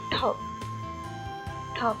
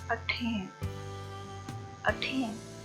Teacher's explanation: तो ये puff of air के साथ प्रोड्यूस होगा। कब होगा, अगर ये initially यूज हो रहा है और stressed one है, यानी इस पे जोर दे के इसको बोला जा रहा है।